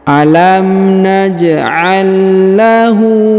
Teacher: huruf hu dibaca panjang dua harakat karena berharakat u Terbalik